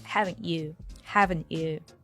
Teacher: he didn't say it with the CH sound the way we would say with you right but he drops the T here T is silent actually